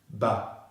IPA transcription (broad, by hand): bə